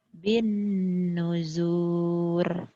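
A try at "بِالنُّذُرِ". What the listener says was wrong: Pendek. Bin nuzur.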